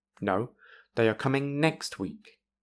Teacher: the corrected word is stressed and has falling intonation